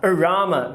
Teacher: Dois schwas. Por quê? Porque elas estão em posição fraca. A mais forte é do meio.